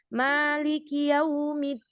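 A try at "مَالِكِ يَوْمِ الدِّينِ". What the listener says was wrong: Ki nggak boleh cepetan.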